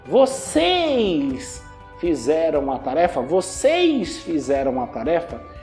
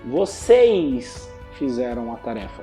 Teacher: vocês fizeram a tarefa esse e fica com som de i vocês fizeram a tarefa então quando uma palavra termina com s